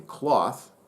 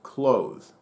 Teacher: There's the unvoiced TH as in cloth, and the voiced TH as in clothe. Of course, you also have the long O in clothe versus the short O in cloth.